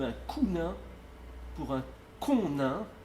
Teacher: il va fermer le O en OU devant une consonne nasale